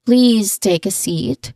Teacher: So the long e sound in please. So there's a long e sound in please, it should be held slightly to, you know, convey politeness.